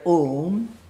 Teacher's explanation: A is pronounced with open vowel, U with half open, half closed, and Ma with mouth completely closed.